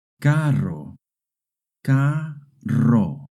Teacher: two R's together make a rolling R sound.